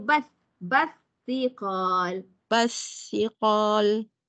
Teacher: bila ada sabdu tu selepas lam, bacaan kita kena masuk kepada huruf yang bersabdu. Kita kena tinggal lam tu.